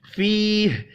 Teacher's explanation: یا مدہ ہے، ایک الف کے برابر کھینچ کر پڑھیں گے